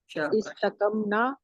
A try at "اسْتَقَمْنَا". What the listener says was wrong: استقمنا نہ تھوڑا سا لمبا کیا کریں، یہ الف مدہ ہے نا، ہم یہ الف پڑھتے ہیں نون.